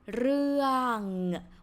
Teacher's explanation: And then the vowel is สระเอือ So สระเอือ see 3 letters นะคะ and it's how to say complex vowel has two vowel sounds and and so เอือนะคะ therefore this word is pronounced เรื่อง with งองู ending consonant falling tone